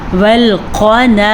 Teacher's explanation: سب سے پہلے قاف کو موٹا پڑھیں گے کیونکہ یہ موٹا قاف ہے۔